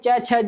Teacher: च, छ, ज बोलने का हमारी जीभ जो है दांतों के पास थोड़ा सा ऊपर टच करती है। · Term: तालु वर्ग